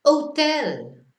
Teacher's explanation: we never pronounce the H in Spanish, so we just go to the next letter